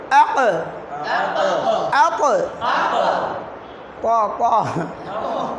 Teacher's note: কলকলার হরফগুলো সাকিন অবস্থায় তাদের মাকরাজের সাথে শক্তভাবে ধাক্কা লাগার কারণে একটা অতিরিক্ত আওয়াজ হইবে